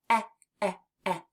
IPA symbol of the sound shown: ĕ